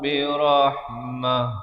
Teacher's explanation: ta simpul bila kita berhenti, dia ditukarkan kepada bunyi ha dan diberikan tanda mati mendatang